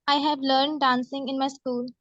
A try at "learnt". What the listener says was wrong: आपने learn बोला कि learnt बोला है? पहले learn बोला था ना? तो learnt का T सुनना चाहिए एग्जामिनर को. नहीं तो गलत हो जाएगा आंसर.